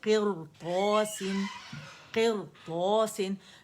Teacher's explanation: اور قی کی آواز آنی چاہیے کی کی آواز نہیں آنی چاہیے